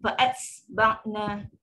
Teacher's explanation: Disebut dengan sifat hams, udara terlepas yang berlebihan pula sehingga berlaku seperti macam huruf sin. Penambahan huruf sin.